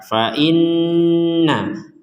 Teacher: Kemudian ada nun bertasydid, kita baca dengan dengung.